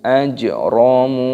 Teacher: ada huruf jim yang berharokat sukun, ini dimatikan dan diqolqolahkan, dipantulkan suaranya. Ajramu, munya panjang, kanu, kafnya mad tabi'i panjang, nunnya panjang, kanu minal ladzina, ada alif lam.